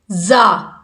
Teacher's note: زا سیٹی کے ساتھ، سیٹی کی آواز آئے گی اس کے اندر، اس کو نرمی سے پڑھنا ہے۔